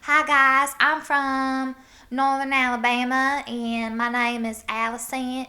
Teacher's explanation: can hear i pronounce my consonants a little bit more whereas northern alabama is you kind of drop your consonants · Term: northern alabama accent